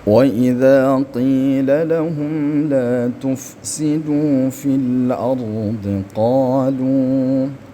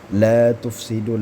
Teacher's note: La tufsidu panjang juga dua harakat disebabkan ada wau sukun yang sebelumnya berharakat dummah